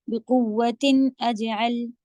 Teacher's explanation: یہاں پہ تنوین کو نہیں کھینچیں گے کیونکہ آگے حروف حلقی میں سے آ گیا ہے تو نون کو پھر نہیں کھینچا جاتا ہے، غنہ نہیں کیا جاتا ہے، ظاہر کر کے پڑھیں گے صاف.